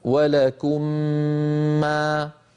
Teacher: فندغم الميم الأولى في الثانية ونطول الغنة، نمطها حتى تكون أكمل ما تكون، كما ذكرنا في ميزان الغنن في الحلقة الماضية، وسأذكركم به الآن بإذن الله تعالى. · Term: إدغام